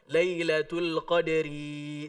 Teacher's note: Ketika baca Lailatul Qadri di ayat ketiga, ro-nya nggak panjang.